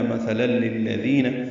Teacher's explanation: مثلا للذین، سا نرمی سے ادا ہوگا، تنوین کے بعد لام آنے کی وجہ سے لل میں ادغام کامل ہے